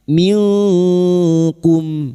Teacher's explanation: Yutaqabbala min, nun sukun bertemu kaf ikhfa hakiki. Nun sukun dibaca samar dan mendengung selama 3 harokat